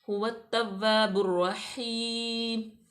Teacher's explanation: را مشدد بھی ہے، را مفتوح بھی ہے، تو را پور پڑھی جائے گی